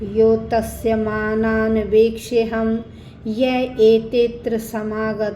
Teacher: बाद एस का सिंबल इसे बोलते हैं अव ग्रह का चिन्ह तो हम अ का उच्चारण नहीं करेंगे ठीक है एक के बाद सीधा त्र की आवाज आएगी